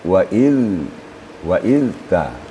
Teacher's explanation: Zal tidak boleh suara diputuskan tapi harus mengalir waiz waizta kemudian tasdiknya taazzana tidak boleh disyiddahkan tapi harus rakhawa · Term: huruf Zal